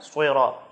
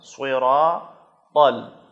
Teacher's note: صاد کو موٹا کرنا ہے، زبان کو گول کرنا ہے، تو یہ صاد ادا ہوگا،